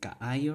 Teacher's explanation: two vowels together, there's a glottal stop in the middle